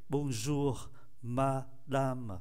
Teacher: Bonjour, chúng ta để ý phải phát âm nhẹ nhẹ, câm R ở cuối.